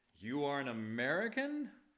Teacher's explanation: some lazy speakers ask a question with a statement by just raising their voice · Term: rising intonation